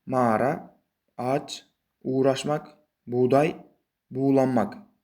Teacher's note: G' harfidan oldin kelgan unli harfi esa a yoki nuqtasiz u biroz choʻzibroq aytiladi. · G harfi a yoki nuqtasiz u harflaridan keyin kelsa, bu holatda siz G harfini o'qimasligingiz kerak, ya'ni talaffuz qilmasligingiz kerak. G harfidan oldin kelgan unli harf esa a yoki nuqtasiz u biroz cho'zibroq aytiladi.